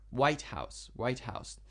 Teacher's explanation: if you say a compound word like this, compound means two words together, and it is a noun, you need to make the first one stronger.